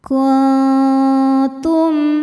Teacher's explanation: Cara bacanya nun disamarkan menuju ta. Kemudian ada dengungnya. dengungnya sedikit karena ta ini makhrajnya dekat dengan nun.